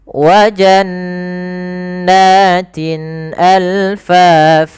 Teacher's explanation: Jelaskan kasrahnya sempurna karena bertemu setelahnya Hamzah maka ini kita namakan dengan izhar